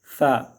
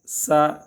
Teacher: زبان کو اندر رہیں گے تو سیڑھی کی سے آواز آ جائے گی، اندر نہیں رکھنا ہے، زبان کو دانتوں کے نیچے لگانا ہے، نیچے. ثا سا، زبان کو اندر رکھیں گے سا ہو جائے گا.